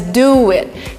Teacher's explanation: So we kind of have this extra letter between the two words, W, and it's pronounced as you, do it. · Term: intrusion